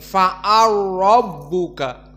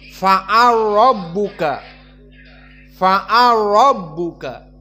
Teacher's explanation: karena keduanya mutaqoribain mutajanisain di mana lam dengan ro sama-sama makhrajnya dari lisan dan begituun berbeda dari sifatnya maka fa'ala rbuka lam masuk kepada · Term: idgham alkabir